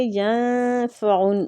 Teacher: نون ساکنہ پہ اخفاء حقیقی ہو رہا ہے، نون کو چھپائیں گے